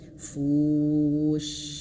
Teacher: Dan huruf shin dia memiliki sifat tafasyi, mengalir nafas dan bertebaran nafas di dalam mulut.